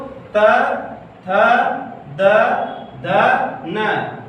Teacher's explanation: दंत व्यंजन मतलब जो हमारा जीभ जब इसके उच्चारण करते समय हमारा जीभ जब दांत से टच होती है तो इसलिए इसको दंत व्यंजन कहते हैं